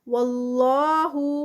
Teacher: اللہ کا نام اس سے پہلے زبر ہیوی ادا ہوگا